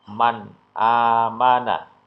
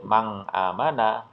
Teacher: atau tanwin dibaca jelas alias tidak boleh mendengung